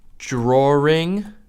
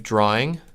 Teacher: the R sound starts to pop up in places where it never existed in the first place. So a lot of times you'll hear people say something like drawing instead of drawing. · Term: intrusive R